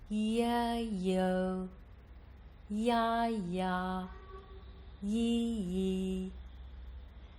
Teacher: This time notice instead of either a pop or a glottal stop or a small H sound, the sound is very smooth. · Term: smooth voice onset